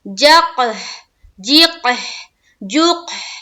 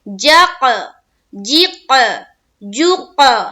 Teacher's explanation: 5، قاف قاف با جیم دال، ان کا مجموعہ ہے قطب جدی۔ جب ان پر جزم ہو تو ان کو پڑھتے وقت ان کے مخرج ٹکر کھا کر الگ الگ ہو جاتے ہیں، یعنی کہ ڈبل ہو جاتے ہیں، ڈبل ساؤنڈ آئے گا، گیند کی طرح اچھلتی ہوئی سی ساؤنڈ آئے گی۔ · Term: قلقلہ